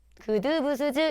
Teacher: 그냥 평범한 소리예요. 목청의 긴장도를 낮춰 강하지 않게내는 소리. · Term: 예사 소리